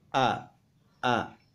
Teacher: untuk pelafalan huruf alif jika sudah berharokat itu ada penekanan di tenggorokan bagian bawah